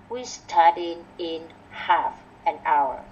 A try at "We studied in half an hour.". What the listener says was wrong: Starring rồi, chữ sờ tờ này chưa được ha.